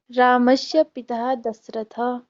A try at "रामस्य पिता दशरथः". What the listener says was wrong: पिता नहीं, रामस्य पिता, पिता नहीं, विसर्गः नास्ति। रामस्य पिता दशरथः।